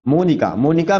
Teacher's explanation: मोनिका में देखिए अ का उच्चारण नहीं हो रहा है, इसमें ओ का उच्चारण हो रहा है। मोनिका ई की मात्रा है और आ की मात्रा है, अ नहीं है कहीं भी, तो ये आपका सही उत्तर हो जाएगा।